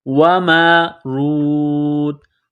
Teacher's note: نقطوں والی تا ہے اس کو باریک کرنا ہے